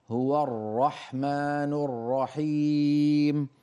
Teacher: لا تكرر الراء، لا تقول هو الر هو الر، سمعت هذا التكرير الذي يؤدي إلى ظهور عدة راءات، منهي عنه